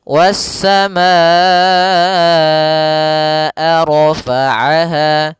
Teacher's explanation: Wassamaa, baru dilepaskan a-nya. Kita panjangkan dulu ma-nya baru bacaan ke a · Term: mad wajib muttasil